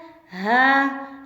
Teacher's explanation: हलक के आखिरी हिस्से से अदा हो रहा है, गले के आखिरी हिस्से से हा निकल रहा है।